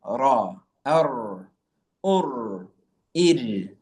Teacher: the letter Ra is pronounced via the rear part, the back part of the tip of the tongue.